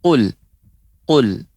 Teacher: dia lebih pangkal lidah ya lebih ke dalam dan mengenai langit-langit yang lunak bagian belakang